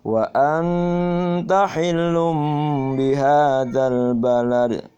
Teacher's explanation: jangan lupa hilnya ditahan karena dia ditekan karena ada tasydidnya